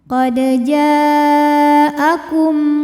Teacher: satu kata yaitu kata jaa maka jim dipanjangkan boleh empat boleh lima harakat qod jaakum kum berikutnya ada hukum izhar syafawi sebab mim sukun menghadapi huruf yang bukan mim atau ba maka mim ini kita bunyikan dengan jelas